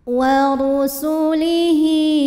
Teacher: Wa kutubihi wa ru. Ro dibunyikan secara tafkhim karena ro berbaris dhammah. Cara bacanya ditebalkan.